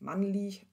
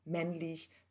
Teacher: eine partielle Assimilation, eine Hebung des A zu Ä, also es nähert sich dem I weiter an